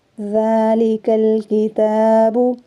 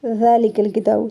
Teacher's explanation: ذال کو 1 الف کی مقدار کھینچ کے پڑھیں گے۔